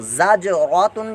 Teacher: زا کے اوپر حرکت ہے، جیم ساکن قلقلہ ہو رہا ہے، را حرکت ہے اور اس کو پرموٹا بھی پڑھیں گے، زبر پیش ہو تو پرموٹا کرتے ہیں اور یہ گولتا ہے آگے، اس پر تنوین ہے، تنوین کا قاعدہ لاگو ہو رہا ہے.